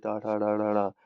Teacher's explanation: यह व्यंजन ताल के ऊपरी भाग मूर्धा से उच्चारित होते हैं। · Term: मूर्धन्य, मूर्धन्य व्यंजन